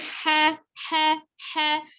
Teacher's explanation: dari al-halqi tenggorokan bagian tengah, ha. Kho-nya dari tenggorokan bagian atas, kho.